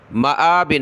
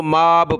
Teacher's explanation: حمزہ کو کھینچیں یعنی میم کو نہیں، ٹھیک ہے، مآبن، جب رکیں گے تو با پر قلقلہ ہو جائے گا، مآب، بہت سارے اس کو ماب پڑھ لیں گے، ماب یعنی میم کو کھینچ لیں گے اور حمزہ کی الگ سے نہیں پڑھیں گے، حالانکہ یہ تین لفظ ہیں، میم، حمزہ، با۔